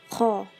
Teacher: Makhraj kho, bagian tenggorokan paling atas atau daerah pangkal lidah dan langit-langit mulut yang berdaging